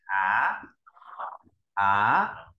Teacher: Thanh 2 cái độ cao là 3 năm, mình sẽ đọc từ trung bình lên cao nhất, ta đọc từ dưới lên trên